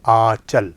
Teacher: इसमें भी आपको नून गुन्ने की आवाज़ नाक से निकलती हुई सुनाई दे रही है